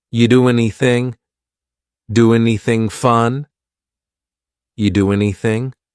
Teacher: We sometimes drop the A, and we're going to push those two together because there's two N sounds side by side. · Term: dropping linkings